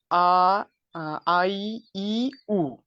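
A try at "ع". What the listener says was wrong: আইনের উচ্চারণ হচ্ছে না। আইন এবং দুটোর মাঝে পার্থক্য আছে। আইনের মাখরাজ কোথায়? আইন কিভাবে উচ্চারণ হয়? হ্যাঁ, কণ্ঠের মাঝখান থেকে আরেকটু ভালো করে, আরো স্ট্রংলি। বলছি যে পার্থক্য স্পষ্ট করতে হবে।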